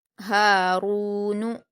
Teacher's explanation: ہا پر الف مدہ ہے، 2 حرکات کھینچ کر پڑھیں گے۔